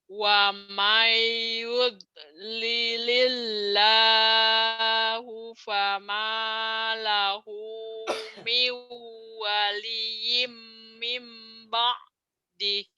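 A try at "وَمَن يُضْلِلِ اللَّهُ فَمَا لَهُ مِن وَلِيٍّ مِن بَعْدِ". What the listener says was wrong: Nah, di mimnya kurang. Famalahu miu waliyim mim ba'di. Coba famalahu, kurang di sini, kurang tasdidnya. Wa may yudlilillahu fama lahu min waliyyin min ba'di.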